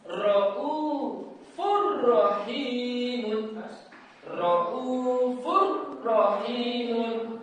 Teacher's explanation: bacaan yang masuk melebur dengan huruf setelahnya tanpa dengung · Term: idgham bila gunah